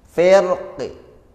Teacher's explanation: yang terakhirnya qafnya dibaca raum, yaitu dibaca setengah harokat kasrah